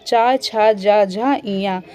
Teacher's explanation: च छ ज झ ञ तथा स वर्णों का उच्चारण स्थान भी क्या है? तालु है।